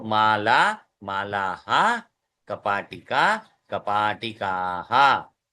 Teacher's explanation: विसर्ग को हम अंतिम स्वर के अनुसार उच्चारण करेंगे, हकार जैसा